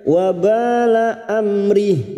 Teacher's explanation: Wabala amri mim sukun bertemu ro idhar safawi, mim sukun dibaca jelas tanpa mendengung